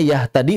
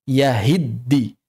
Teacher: Tapi di sini t-nya hilang yang asalnya yahtadi menjadi yahiddi.